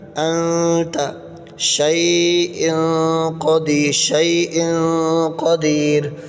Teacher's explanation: تنوین کی مثال شیء قدیر، تنوین کے بعد حروف اخفا میں سے قاف آ رہا ہے، یعنی غنہ ہوگا۔ ناک میں آواز چھپائیں گے اس کا، انت شیء قدیر، شیء قدیر ناک میں پڑھیں گے۔